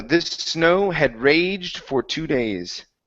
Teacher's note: You want to produce only one S sound.